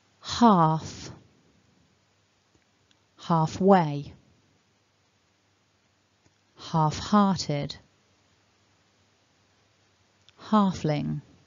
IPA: hɑːf ˌhɑːfˈweɪ ˌhɑːfˈhɑː.tɪd ˈhɑːf.lɪŋ